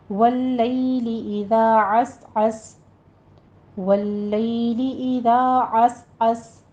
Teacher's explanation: वल्लैली इज़ा अस्अस, वल्लैली लाम के पर तशदीद अदा करते हुए आगे यालीन अदा करना है और इज़ा नरमी के साथ पढ़ते हुए दाल को आगे लिफ मद अदा करना है। अस में सीन के ऊपर सीटी की आवाज़ लाएंगे, आइन को वस्ते हलक से अदा करना है